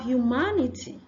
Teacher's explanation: it's a hidden yes sound after the H